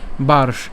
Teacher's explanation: দুষ্টাসু বার্স নেয় এই বার্স নেয় আমরা আরো অনেকবার পড়েছিলাম এখানে রেফের উচ্চারণটা র হসন্ত হবে এবং মূর্ধন্যস হসন্ত পর্যন্ত আমরা উচ্চারণ করছি